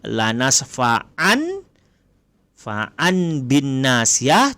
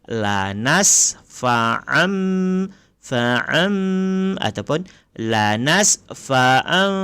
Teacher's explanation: Tanwin ni tanwin bertemu dengan ba, maka ditukar kepada huruf mim.